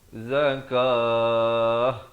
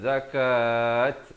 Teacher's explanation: pastikan ditukarkan bunyi ta marbutah ini kepada bunyi ha